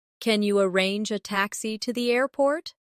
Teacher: In connected speech, can sound like kinya.